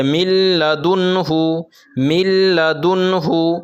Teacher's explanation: ادغام کے ساتھ ادغام کریں گے اور بغیر غنہ کے ساتھ پڑھیں گے